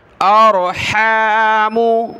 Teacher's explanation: हमज़ा रा ज़बर, और रा को मोटा किया.